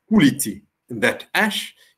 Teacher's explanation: you see all vowels belong to the light set and the first of them is stressed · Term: light vowel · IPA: ˈkulit'i